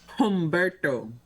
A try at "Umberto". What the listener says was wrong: Umberto? Yeah, it's not Humberto. Yeah, it's not Jamaican, you know. Umberto. Umberto.